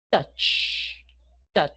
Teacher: Si tocamos la garganta, vamos a sentir que no hay vibración. Obviamente hay sonido, pero no hay vibración.